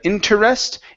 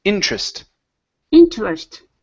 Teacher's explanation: we're going to take this from three syllables to two